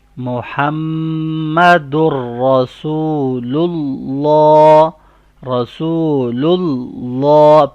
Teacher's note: پہلے لام باریک پڑھا جا رہا ہے اور دوسرا لام بولڈ ساؤنڈ ہوگا